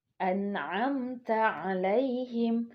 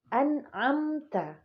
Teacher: Tidak ada dengung di sana, tapi dicepatkan atau dijelaskan lebih tepatnya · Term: izhar syafawi